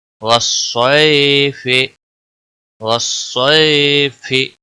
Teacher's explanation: یہاں پر یالین ہے، یا ساکن سے پہلے زبر ہے، تھوڑا نرمی کے ساتھ کھینچ کر پڑھیں گے